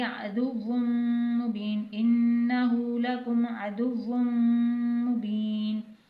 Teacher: واو کی تنوین کو میم مشدد میں داخل کریں گے یعنی ادغام کریں گے اور غنہ کے ساتھ پڑھیں گے